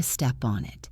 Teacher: The P connects to the O and the N connects to the I. Donit.